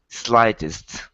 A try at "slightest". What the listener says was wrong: There you go.